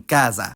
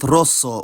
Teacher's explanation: at least in Northern Italy s becomes Z when between vowels and not geminated